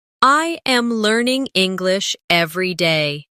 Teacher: Notice how my voice rises slightly on learning and falls at the end on day.